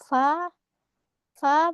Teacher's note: Fa keluar dari bibir bagian bawah dalam bertemu dengan ujung gigi seri atas